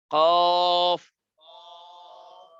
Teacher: কালকে বলেছিলাম যে মোটা হয় কিভাবে, জিহ্বার গোড়া উপরে উঠাইলে মোটা হয়। তো কফ পড়ার সময় তো জিহ্বার গোড়া এমনি উপরে উঠা যায়, তখন খোদ বখোদ মোটা হয়ে যায়।